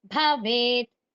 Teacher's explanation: భవేత్లో బ అనేది మహా ప్రాణక్షరం కాబట్టి శ్రవసిస్తూ పలకండి